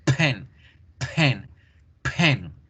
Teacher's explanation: Decíamos p, b, b, b. En inglés debíamos generar ese sonido con fuerza, el de la P, porque genera una explosión.